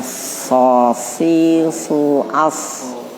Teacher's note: So kayak sa. Posisi lidahnya di dalam, di bawah. Tapi gembung, dia desisnya di dalam.